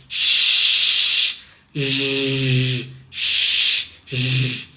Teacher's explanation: Esses sons são fricativos palatais.